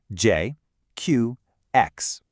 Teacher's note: Q is a really sharp ch sound, lots of air. And X is kind of this hissy sound, somewhere between an S and an esh.